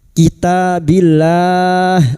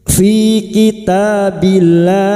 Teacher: Lam jalalah yang didahului kasr dibaca tarkik dan kita panjangkan empat harakat.